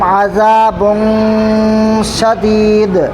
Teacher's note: अज़ाबुन में इख्फा करेंगे क्योंकि तनवीन के बाद हुरूफ इख्फा के 15 हरफों में से शीन आ रहा है, इसलिए यहाँ पर नाक में आवाज़ को छुपा कर पढ़ेंगे